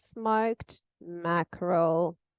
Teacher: So first it's she starts higher. It's this level tone. She doesn't, change the pitch of her voice a lot.